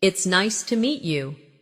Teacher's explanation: stress nice and meet to make it sound warmer.